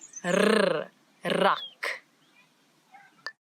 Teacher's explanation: This word it doesn't have the ch that we've been talking about, but now we've got a new sound in Afrikaans that a lot of people in different languages struggle with a little bit, and it's the rrr, as if your tongue is jumping up and down in your mouth.